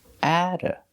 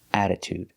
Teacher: Before an unstressed syllable, the T is between vowels, so we pronounce it like a d, a fast D